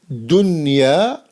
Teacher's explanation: We read them with noon, normal noon, without extra ghunna.